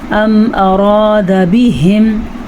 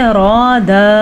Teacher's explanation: रॉ को पुर पढ़ना है और दाल को किसी सूरत में लंबा नहीं करना। अगर आप इसको कहें अराद तो आपने गलती कर दी।